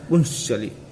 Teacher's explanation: कैसे, प है, प का पू, प में उ, पकार के बाद उकार आया, ऊपर अनुस्वार है, म हुए, पू म मकार आया, और मकार के बाद क्या है, पुम धन चली, शब्द क्या बनता है, पुम धन चली, मकार के बाद च आया, चकार है, तो यहाँ क्या हुआ, पुम चली शब्द था तो बन गया पुंस चली, सकार का आगम हो गया, इसलिए शब्द बन गया पुंस चली।